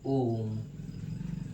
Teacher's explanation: ओम तीन मात्रा का स्वर है।